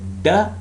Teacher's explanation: the tip of the tongue is touching the alveolar Ridge and that is the point where it is cutting off the airflow